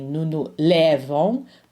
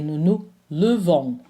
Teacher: Notice that for nous and vous, we didn't put that accent grave, again, because we don't stress this syllable. We don't say nous lèvons, we say nous levons. So the stressed syllable is the last one.